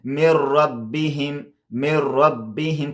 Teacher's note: مطلب دا چې شد کارول شوی خو دې کې غنه نشته. مطلب دا چې پوزه کې نه ادا کیږي